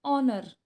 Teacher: There should be n, because in honor a h is silent and we pronounce honor